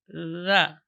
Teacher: ujung lidah di ujung gigi seri atas, mengalir suara, tidak boleh mengalir udara karena dia huruf rakhawah dan jahar.